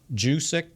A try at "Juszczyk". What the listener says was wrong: Forget the J. Like a Y-O-U.